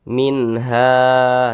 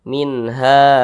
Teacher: dibaca jelas tidak berdengung minha nah tidak berdengung jangan dipanjangkan atau jangan didengungkan seperti ini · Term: izhar halqi